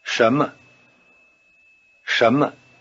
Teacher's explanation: the tone pattern of Shama sounds rather like a rising tone over both syllables